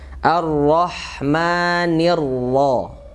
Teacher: Di situ ada mirip ya sama kalimat sebelumnya, alif lam dan ro, alif lam syamsiyah, tasdid ke ro berharga fathah maka hukumnya tebal.